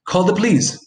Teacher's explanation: in connected speech that schwa which is in the first syllable might very easily disappear